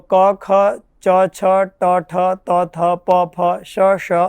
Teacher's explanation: આ વર્ણોના બાહ્ય પ્રયત્ન ત્રણ છે કયા કયા વિવાર શ્વાસ અને અઘોષ